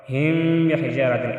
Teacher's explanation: ادھر ہم اخفا کریں گے، اخفاء شفوی